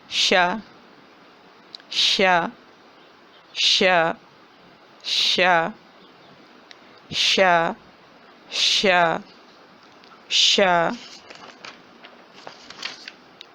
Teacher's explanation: زبان کا درمیان جب اس کے سامنے یا تالو سے لگے تو شین کی ادائیگی ہوتی ہے